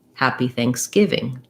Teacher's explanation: main stress on the give syllable